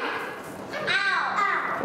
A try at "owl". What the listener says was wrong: Yeah.